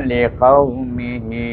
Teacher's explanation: tanda panjang ni menunjukkan dia kena baca panjang 4 atau 5 harakah · ha di sini adalah ha pangkal halkum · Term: mad silah tawilah